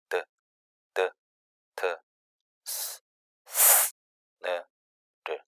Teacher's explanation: 모두 다 혀끝과 치아 또는 치아 골격 사이에서 발음이 된다는 사실을 확인할 수가 있습니다. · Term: 치조음